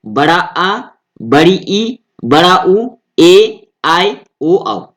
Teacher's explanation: रस स्वर से दुगना समय जब लग रहा है वो दीर्घ स्वर हो गए